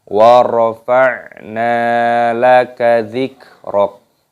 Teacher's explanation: nunnya dipanjangkan, ada tanda alifnya mad tabi'i, dua ketukan.